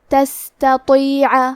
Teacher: تا حروف الترقیق میں سے ہے تو ہمیں تا کو پتلی آواز میں پڑھنا ہے اور کیونکہ تو حروف التفخیم میں سے ہے تو ہم حرف تو کو موٹی آواز میں پڑھیں گے. آخری میں عین کی ادائیگی حلق کے درمیان والے حصے سے ہے